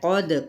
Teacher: قد، قوف پر ہے، حروف متعالیہ میں سے ہے، دال پہ کلکلا یعنی ہلایا جائے گا۔